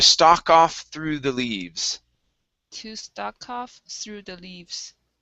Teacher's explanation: pronounce that k and you can uh slide that right into the word off